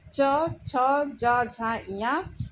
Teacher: तालु का जो अगला भाग होता है वहाँ पर ज़बान लगती है, तो इसकी इन वर्णों का उच्चारण होता है च, छ, ज, झ, इया। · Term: तालव्य